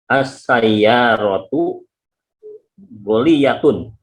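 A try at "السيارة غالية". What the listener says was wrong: Ghaliyatun, itu dia sahih. Ghainnya panjang, ghaliyatun. As-sayyaratu ghaliyatun.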